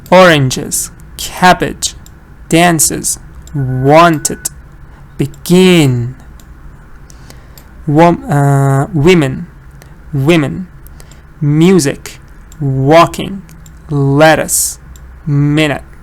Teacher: these are not schwa, they are short E sounds. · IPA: /ɪ/